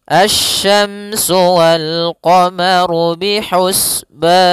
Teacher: Pada lafal asy-syamsu, di sini ada alif lam syamsiyah, yaitu alif lam yang ditulis tapi tidak dibaca, sehingga bacaannya langsung ke huruf shin